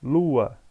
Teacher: eu pronunciei o U e eu pronunciei o A com alta intensidade. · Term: vogais